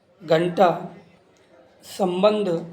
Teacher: अनुस्वार के उच्चारण में नाक से अधिक सांस निकलती है और ना या मा की ध्वनि आती है